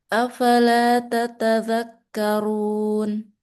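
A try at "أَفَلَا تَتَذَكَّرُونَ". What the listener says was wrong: Oke, bagus.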